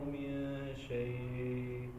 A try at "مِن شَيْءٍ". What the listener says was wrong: آخر میں حمزہ کی آواز آنی چاہیے جھٹکے کے ساتھ.